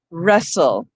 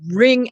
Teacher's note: the sound is r with no w component at all